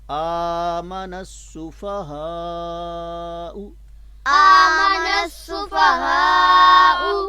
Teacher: بڑی مد ہے، اور اس کی آواز جو ہے وہ ائمہ کرام نے 5 الف کے برابر بتائی ہے